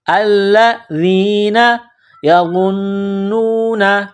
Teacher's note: ذال کو نرم کرنا ہے. زبان کا سرہ تھوڑا سا باہر نکالیں گے ذال کو پڑھتے وقت